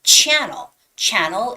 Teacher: the stress goes on the first vowel first syllable